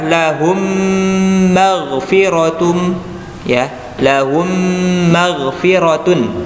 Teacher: Lahum ditahan dulu karena mim termasuk dari huruf gunnah.